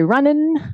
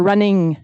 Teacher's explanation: So you may say runnin' with an n or running with a ng. And in fact, speakers of English pretty much all do both of these, but at different rates.